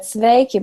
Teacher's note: a V made with your 2 lips